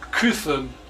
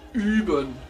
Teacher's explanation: Ü, combination of UE, approximate like an E with rounded lips